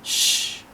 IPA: sh